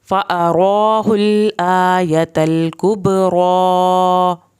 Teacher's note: रो को पुर करके पढ़ना है और खड़ी ज़बर को आपने खींचना है।